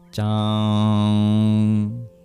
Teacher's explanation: So it's like CH but less breathy. Sanskrit tends to be less breathy than our regular English variants. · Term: palatal plosive